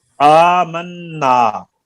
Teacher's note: आमन्ना, आ और मन्ना दोनों की लंबाई एक जैसी है